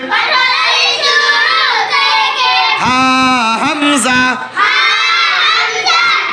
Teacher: কণ্ঠনালী শুরু থেকে হা হামজা, দুই নম্বর মাখরাজ। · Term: এক নম্বর মাখরাজ